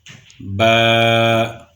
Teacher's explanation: جب اوپر اور نیچے کے دونوں ہونٹوں کا تر حصہ آپس میں ملتا ہے تو با ادا ہوتا ہے، با۔ اس کے بعد واو۔